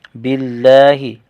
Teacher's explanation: لام کا کھڑا زبر ایک الف کھینچ کر پڑھیں گے